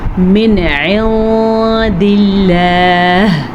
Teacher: نون ساکن کے بعد دال ہے جو کہ حروف اخفاء میں سے ہے تو ہم نون ساکن کو چھپا کے پڑھیں گے اور غنے کے ساتھ پڑھیں گے